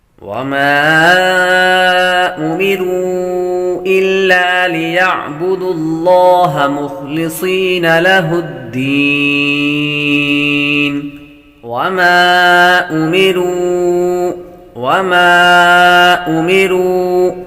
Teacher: میم کے بعد الف ہے، الف حروف مدہ، حروف مدہ کے بعد حمزہ دوسرے کلمے آ رہا تو مد منفصل ہوگی، مد کریں گے۔